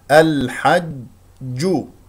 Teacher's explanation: اخرجها من وسط الحلق مجاوره لحرف العين يجري فيها النفس والصوت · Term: الحاء